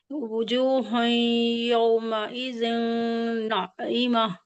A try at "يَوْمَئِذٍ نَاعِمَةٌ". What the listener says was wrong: نہیں اخفا کیوں کر رہی ہیں آپ؟ غنہ کریے نا یومئذ ناعمة.